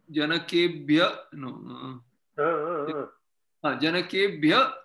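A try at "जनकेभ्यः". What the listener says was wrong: Janakebhya. There is a Visarga. Janakaya, Janakabhyam, Janakebhyaha. Janakabhyam, Janakebhyaha.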